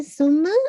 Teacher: میم پہ آپ کا غنہ ہوگا، اکمل غنہ ہوگا